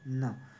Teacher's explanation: यांचा उच्चार थोडा नाकातून केल्यासारखा उच्चार होतो, म्हणून त्याला आपण अनुनासिक म्हणतो